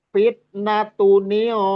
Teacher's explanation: ikhfanya bertemu qaf ya, lebih dominan ke suara gunnahnya atau dengungnya